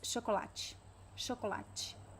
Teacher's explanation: the last vowel is very very weak it's not it's not exactly a reduction it doesn't completely disappear but it almost disappears it's very very weak